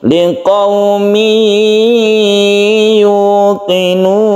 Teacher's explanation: Idgham digunakan seperti ini, tanwin bertemu ya ini harus digunakan atau kita tekan ke ya-nya sambil berdengung